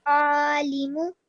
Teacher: I can see that you tried your ayn from your throat.